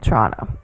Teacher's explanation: there's only one T in her pronunciation and both the vowels are O's